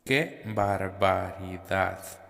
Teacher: la palabra que es dicha en un tono más agudo que la palabra barbaridad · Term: diferencia de entonación